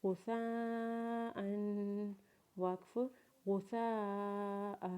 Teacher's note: غائن کے اوپر پیش پڑھیں گے، سا اور الف کو اکٹھا پڑھیں گے، پھر مد پڑھیں گے اور پھر سا کے اوپر زبر پڑھیں گے اور پھر سا کو 5 الف کے برابر کھینچیں گے کیونکہ اس کے اوپر بڑی مد ہے. اور پھر حمزہ کے اوپر تنوین پڑھتے ہوئے حمزہ کے اوپر غنہ کریں گے اور وقف کے بعد حمزہ کو 1 الف کے برابر کھینچیں گے.